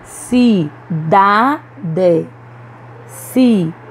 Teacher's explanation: em todas essas palavras nós pronunciamos com mais força a penúltima sílaba então elas são paroxítonas